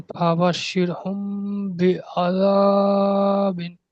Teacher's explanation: মিম সাকিনের পরে বা এসছে, তাই মিম সাকিনকে একই পরিমাণ গুণনা করে পড়তে হবে, একে ইকফায়ে সাফাবি বলে।